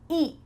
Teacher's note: No, because I'm using a stopped T. My tongue is stopped at the top of my mouth. Eat. And I don't let that air follow through.